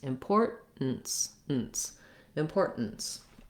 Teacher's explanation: i'm lifting up and stopping the air for the t and then i just release into the ns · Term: stop t